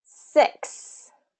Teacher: so that X sound is kind of that KS